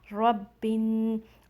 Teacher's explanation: तो यहाँ पर हमज़तुल वसल है, मीन्स साइलेंट अलिफ़, इसको हम नहीं पढ़ेंगे। बा को आपने नून में मिलाना है, रब्बिन। और यहाँ पर नून मुशद्दद है, नून मुशद्दद मीन्स ऐसा नून जिसके ऊपर शद्दा हो।